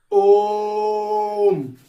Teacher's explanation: जिनको बोलने में हमें दीर्घ स्वर से भी ज्यादा समय लगता है, उसको हम प्लुप्त स्वर कहते हैं।